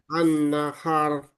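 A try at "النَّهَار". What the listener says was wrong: 3 ketukan lamban. Masih cepat. An-nahar.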